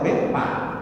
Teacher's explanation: Sok orang Sunda, nah orang Sunda nggak bilang fa tetap pak.